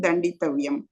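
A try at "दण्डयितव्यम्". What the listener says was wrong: தண்டயித்தவ்யம். ஏன்னா இது உங்களுக்கு சுராதி கணாவா வரும்பொழுது உங்களுக்கு அந்த அயான்னு வந்துடுறது இல்லையா? தண்டய. அதனால தண்டயித்தவ்ய.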